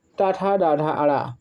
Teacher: अब टा वर्ग की बारे में बात करें तो टा वर्ग में आपका आएगा टाठा, डाढ़ा, अड़ा। ये मूर्धा, मुंह के भीतर की छत का अगला भाग